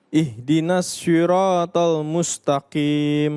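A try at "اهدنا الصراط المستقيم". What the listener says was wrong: Gak usah shi. Gak usah bibirnya maju. Karena kalau bibirnya maju menjadi sya. Ihdinas siratal mustaqim. Jangan si, tapi si.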